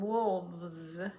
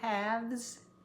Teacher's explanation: We say it with a V when we make it plural instead of with the original F.